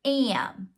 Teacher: We have to have the A representing a whinier sound.